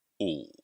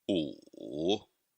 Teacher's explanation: É bem grave, bem baixo na garganta. E quando ele está no ponto mais baixo, pode até acontecer de cortar o som, pois as cordas vocais param de vibrar. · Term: terceiro tom